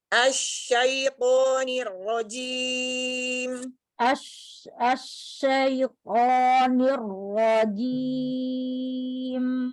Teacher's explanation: Ketika masuk ke to, bibir nggak ikut bekerja.